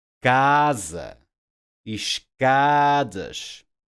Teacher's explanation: By default, these words are stressed on the next to last syllable.